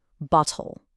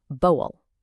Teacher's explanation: in a lot of common British accents, that T sound just disappears. It becomes more like boel.